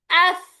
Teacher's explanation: ऊपर के दांत नीचे के होंठ को कतरेंगे